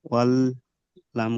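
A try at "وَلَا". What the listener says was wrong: লা টান হবে, খাড়া যাবার একালিপ টান হবে। অল্লা। অল, ওটা নয়, ওটা টান নয় তো। অল, ওটাই টান হলো কি? অল্লা।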